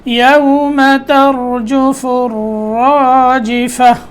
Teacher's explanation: را کے اوپر تکرار کی آواز نہیں آنی چاہیے، یعنی اس میں حرکت نہیں ہونی چاہیے، بار بار یعنی آواز کو ٹکرانا نہیں ہے، را کو پکڑنا ہے.